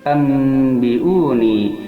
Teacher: Setiap nun mati atau tanwin menghadapi ba itu termasuk iklab, yang mana cara membacanya antara gunnah dan ikhfa, dan nunnya diganti menjadi m atau mim.